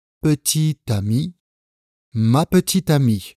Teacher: Ou encore « mon petit ami » liaison obligatoire